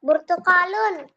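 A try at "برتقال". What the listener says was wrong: burtukol, kolnya panjang, burtukolun, ya. Jangan burtukolun. Nah, salah itu, kofnya kurang panjang.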